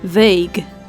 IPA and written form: vaːx (Vaag)